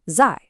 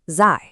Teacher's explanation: It's the fourth tone, the falling tone. It needs to be sharp and definite like a chop.